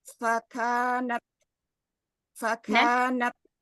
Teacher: Natnya syiddah hamas adanya suaranya di situ. Di makrotnya aja. Jangan nat nggak ada di dalam ya.